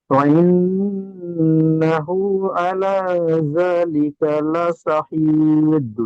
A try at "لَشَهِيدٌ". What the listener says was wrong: হ্যাঁ, শিন উচ্চারণ করেন, বড় শিন, লা শাহিদ। আপনার শিনটা সিনের মতো উচ্চারণ হচ্ছে, ছোট সিন উচ্চারণ হচ্ছে। যেমন এই যে সিন আছে নোক্তাবিহীন, এই সিনটা উচ্চারণ হচ্ছে। বড় সিন উচ্চারণ করতে গেলে একটু মোটা করে তালবের স উচ্চারণ হয়, আর এই ছোট সিনটা দন্তের স উচ্চারণ হয়, ঠিক আছে?